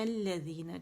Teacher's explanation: لام کا یہاں پہ اس کے اندر ادغام ہو گیا لام شمسی کے اندر، ٹھیک ہے. اس وجہ سے ہم اس کو پھر مشدد پڑھتے ہیں، الذین پڑھتے ہیں، الذین، ٹھیک ہے.